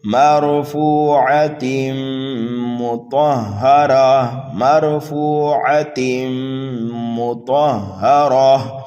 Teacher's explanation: حرف طا کو پر پڑھیں گے، یہ حروف مستعلیہ میں سے ہے، را کے اوپر زبر یا پیش ہو تو را کو پر پڑھا جاتا ہے۔